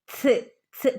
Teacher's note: ഒരു ഛ്, ഛ് കാറ്റ് പോകുന്നൊരു ശബ്ദം ഉണ്ടാവണം. ഓക്കെ, ഛ്, ഛ് പുറത്തേക്ക് ഇങ്ങനെ കാറ്റ് പോകുന്ന രൂപത്തിൽ വേണം തന് സുക്കൂന് കൊടുക്കാനായിട്ട്.